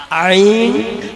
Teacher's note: आइन हलक से निकालिएगा, खाइएगा मत, निकालिएगा